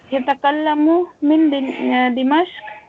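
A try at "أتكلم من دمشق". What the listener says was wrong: مجھے یا کی آواز آ رہی ہے. اتکلم الف ہے شروع میں. اتکلم.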